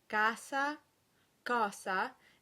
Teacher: many speakers of Italian pronounce these with the Z sound, and many coaches recommend the Z since it sings better and can make your words sound clearer.